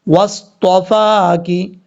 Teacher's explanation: واو کو جب صاد سے ملائیں گے تو بیچ میں الف ہے، اس الف کو چھوڑ دیں گے۔ صاد حروف مستعلیٰ میں سے ہے، پر پڑھا جائے گا۔